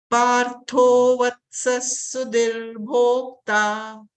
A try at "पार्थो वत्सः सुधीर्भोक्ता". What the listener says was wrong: Sudhir Bhokta, because it's Dirkha here. Sudhir Bhokta. Partho Vatsas Sudhir Bhokta.